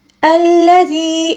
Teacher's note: اقرأ وربك الأكرم الذي علم بالقلم، الذي، اب دیکھیں یہاں پر یا مدہ ہے، یا ساکن سے پہلے والے حرف یعنی زال کے نیچے زیر ہے، ٹھیک ہے، اس کو یا مدہ کہا جاتا ہے، اس کو ہم نے تقریباً ایک الف کے برابر کھینچ کر پڑھنا ہوگا